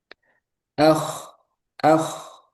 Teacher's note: Kho ini dia alirannya juga banyak ya. Tapi dia tebal. Huruf yang tebal. Ah, ah. Seperti ngorok, tapi nggak terlalu banyak ngoroknya. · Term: huruf kho